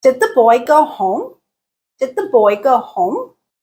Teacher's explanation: intonation pattern in American English uses is a rising intonation so at the end of the utterance the pitch raises this type of intonation is used for yes no questions